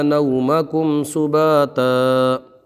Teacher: اظہار شفوی کا قاعدہ ہوگا، گنہ نہیں کریں گے